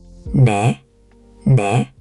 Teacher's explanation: almost like it's between an N and a soft D sound. Your tongue should tap very lightly behind your teeth.